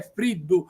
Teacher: Friddu si dice con la doppia D alveolare. Sono convinti, lo dicevano prima, con la doppia D cacuminale, cioè tutte le doppie D, alcuni le pronunziano tutte cacuminali, e non è così, ovviamente, l'abbiamo visto prima, no?